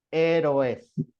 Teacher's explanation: voy a aplicar una sinéresis juntándolos porque sí se forma un diptongo donde no debería haber